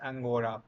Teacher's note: Southern Italy voices consonants after sonorants, as in ancora, pronounced angora